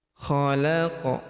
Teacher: Kemudian khalaqana zawjaini, khalaq, huruf qaf berharokat sukun kita pantulkan atau kita qalqalahkan